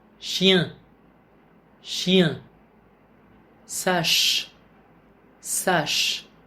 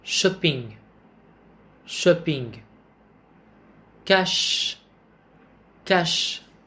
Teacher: Đây là một phụ âm vô thanh, có nghĩa là khi ta đưa tay lên cổ họng chúng ta cũng không cảm nhận được sự rung của thanh quản khi phát âm phụ âm này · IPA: [ʃ]